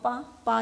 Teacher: हमारे दोनों होठ मिल रहे हैं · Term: औष्ठ